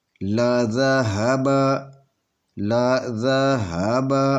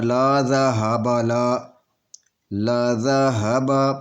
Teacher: وَلَوْ شَاءَ اللَّهُ لَذَهَبَ، لَذَهَبَ، اس کو ایسے نہیں پڑھنا لا ذهب، لا ذهب، یہ چاروں حروف برابر آپ نے پڑھنے ہیں، تو ان کے اوپر ایک ایک حرکت کرنی ہے، بالکل ان کو کھینچنا نہیں ہے